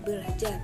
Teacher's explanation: Lanjut, yaitu proses perubahan fonem, ialah berubahnya fonem atau bunyi sebab akibat terjadinya proses morfologi. R di dalam fonem R di dalam kata ber akan berubah menjadi L